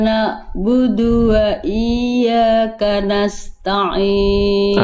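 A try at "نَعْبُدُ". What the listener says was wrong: Tadi ini bisa menjadi kesalahan besar. Bunda melafalkannya jadi hamzah. Jangan na'budu, tapi na'budu. Ini huruf ain. Na'budu. Nggak apa-apa, tapi jangan jadi hamzah. Kalau Bunda yang tadi yang Bunda lafalkan awal, na'budu itu hamzah.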